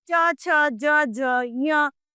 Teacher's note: च वर्ग जिसमें च छ ज ज ञ सम्मिलित होते हैं जिनका उच्चारण तालू से होता है